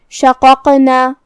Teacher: یہاں قاف کا حکم ہوا قلقلہ، تو ہمیں اسے ہلاتے ہوئے یہ کلمہ کو ادا کرنا ہے · قاف کو ہم زبان کی جڑ اور تالو کے نرم حصے سے ادا کریں گے۔ قاف حروف تفخیم میں سے ہے تو ہم دونوں قاف کو بھاری آواز میں پڑھیں گے، جو کہ دوسرے والے قاف پہ جزم ہے۔ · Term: حرف القاف